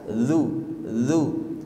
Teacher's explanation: ujung lidahnya sedikit dikeluarkan digesek ke ke gigi seri atas